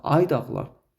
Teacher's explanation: Vurğu ikincidə olacaq. Çünki vurğunu biz elə ay nidasının özünün üzərinə vurduq.